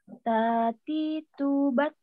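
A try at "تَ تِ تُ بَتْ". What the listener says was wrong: Masih nyasar ke huruf T ini ya. Jangan buru-buru, tenang aja, tenang.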